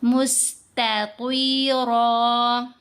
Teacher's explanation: اوپر والے دانتوں کے پیچھے والے حصے کو، تو لیکن ہم نے زبان کو تھوڑا سا راؤنڈ کرنا ہے کیونکہ طا کو موٹا پڑھنا ہے، لپس کو بھی گول شکل میں راؤنڈ شیپ میں کھولیں گے، مستطیرا۔